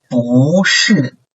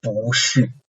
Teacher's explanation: And for the last one, in this case, bu is followed by another fourth tone syllable. So in this case, bu is tone changed into second tone.